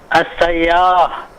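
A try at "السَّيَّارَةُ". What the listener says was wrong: Hidupkan semua harokatnya. As-sayyaratu.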